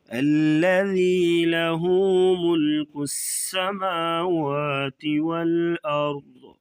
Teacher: را کو اور ضاد کو موٹا کریں گے